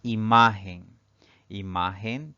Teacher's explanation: en vocal la siguiente palabra es imagen imagen tiene tres sílabas la mayor fuerza de voz al pronunciar esta palabra recae en la penúltima sílaba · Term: palabra grave